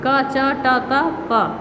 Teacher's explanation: तो का वर्ग कंठ, चा वर्ग तालु, टा वर्ग मूर्धा, ता वर्ग दंत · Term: स्पर्शी व्यंजन